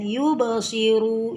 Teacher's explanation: Qalqalah sughra. Jadi qalqalah kecil karena diapit di tengah kata.